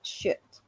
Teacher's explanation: No decimos should con L, sino que decimos should quitando la L y agregando solamente la D